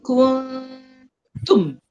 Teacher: nun tu tersembunyi belakang huruf ta. Jadi dengung dia tu dengung di belakang huruf ta.